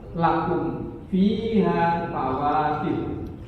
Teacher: Kemudian ada mim mati ketemu dengan fa'il. Mim mati ketemu dengan fa'il harus jelas nih. Karena itu disebut dengan idhar syafam.